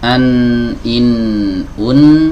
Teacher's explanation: yang pertama yang di bawah sini ya huruf nun itu keluar dari ujung lidah bertemu dengan gusi